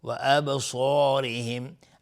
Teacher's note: صاد از حروف استعلاء غلیظ تلفظ میشه. و ابصارهم الف هم تابع صاد غلیظ تلفظ میشه